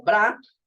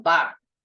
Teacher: en vez de consonante consonante vocal como bra va a decir consonante vocal ba